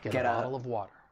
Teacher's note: I am going to pronounce it as you guessed it, a flap t. And then I can link that soft d sound with the article uh